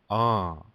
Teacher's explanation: Now say it all, and then the first syllable on. It's like saying the word on, the English word on, but you don't say that n at the end. You just say the beginning. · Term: nasal